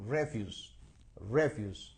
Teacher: o sea el acento está en la primera sílaba